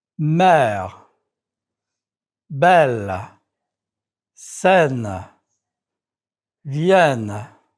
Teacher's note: Note the double N. This double N denasalizes the vowel. It is the vowel E that you practiced in lecture 5.